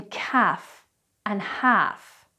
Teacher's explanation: The next silent L is before an F as in calf and half. We don't actually pronounce the L